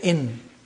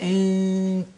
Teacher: pronouncing the noon not from the point of articulation of noon which is behind the upper teeth but from the point of articulation of the next letter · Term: hiding the noon